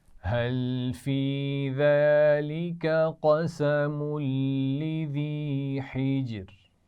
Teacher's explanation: لذی میں یا مدہ ہے. حجر ایک تو جیم پر قلقلہ بھی ہوگا اور آخر میں را باریک ہے کیونکہ اب دیکھیے را ساکن کریں تو جیم پر بھی سکون ہے اور اس سے پیچھے ہا کے نیچے کیا ہے؟ · قسم لذی ملا کر پڑھے جائیں گے تو خیال رکھیے قاف کو موٹا پڑھنا ہے. لذی میں یا مدہ ہے.